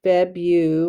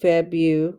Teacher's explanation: And then the R is silent. Febu, we hear the U, Febu, long U.